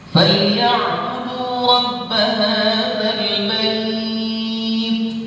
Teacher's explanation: menempelkan ujung lidah kita di gusi di atas, karena itu makhraj huruf ta · huruf ta ini punya sifat hams